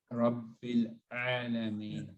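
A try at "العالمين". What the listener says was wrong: So ain, all three of you have a similar ain. It starts with a little hamza. But only in this word. That's not, it's not the same situation in every word.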